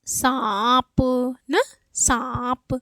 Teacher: सा बोलने पे आ निकल रहा है ना, मतलब मुंह और नाक दोनों पे बल जा रहा है, तो ये है अनुनासिक।